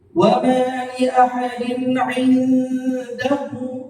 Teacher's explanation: Pertama, kata pada kata indahu, nun mati bertemu dengan dal, itu gunnah